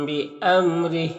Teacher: را کے نیچے زیر را کو باریک پڑھیں گے، یہاں پر وقف کریں گے تو یہ کھڑی زیر سکون سے بدل جائے گا، تو اس طرح سے پڑھیں گے۔